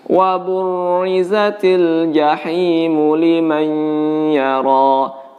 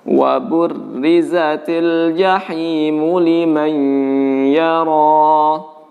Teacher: ro-nya dibaca tipis, meskipun dia ditekan jangan dibaca tebal.